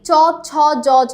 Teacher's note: কোন ব্যঞ্জন ধ্বনি বর্ণ সমূহের উচ্চারণের স্থান অগ্র তালু। সামনের তালু দিয়ে আমরা উচ্চারণ করছি · তালব্য ব্যঞ্জনের জন্য জীভের সামনের অংশ শক্ত তালু। · আমাদের সামনের জিভের সম্পূর্ণ অংশটা লাগছে, ঠিক আছে, তালুতে